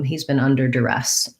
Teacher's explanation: And so duress has second syllable stress. And the first DU can be a schwa, like res.